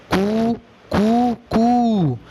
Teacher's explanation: सुबह जब मुर्गा बांग देता है तो आपने सुना होगा मुर्गे की आवाज़ में, मोबाइल में आप सुन सकते हो, उसमें वो 3 स्तर से बोलता है, कू कू कू। इनमें पहला ह्रस्व है, मुर्गे का जो प्रारंभिक नाद होता है, रव होता है, वो ह्रस्व है। दूसरा दीर्घ, तीसरा प्लुत है।